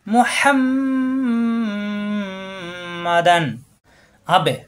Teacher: তানবিন পরে আসছে আইন ইজহারের হরফ এখানে কোনো গুন্না হবে না স্পষ্ট করতে হবে